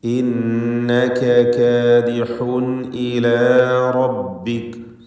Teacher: ഇന്നക കാദിഹുൻ ഇലാ റബ്ബിക്. കാദിഹുൻ ഈ തൻവീൻ ഇൽഹാർ ഹൽഖി നൽകി മണിക്കാതെ വെളിവാക്കി ഉച്ചരിക്കേണ്ടതാണ്